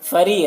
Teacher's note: रॉ को बारीक पढ़ना है, यहाँ पर या मद्दा है।